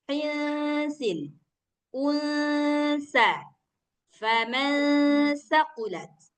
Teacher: Harus samar suaranya antara nun dengan sa. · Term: ikhfa